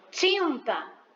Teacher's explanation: Eu tô ouvindo o som do I, ele sai pelo nariz. Por isso que ele é um dígrafo nasal, porque é a junção do I e do N, que nasal, por sair o som pelo nariz, né? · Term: I nasalizado